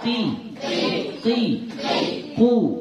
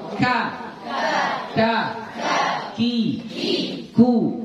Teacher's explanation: Kalau qa di dalam, qa di dalam. Kalau ka itu agak ke depan sedikit.